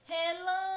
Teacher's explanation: Percebam que a sílaba que mais demora a ser pronunciada é lã. Relâmpago. Portanto, lã é uma sílaba tônica, é uma sílaba intensa, forte.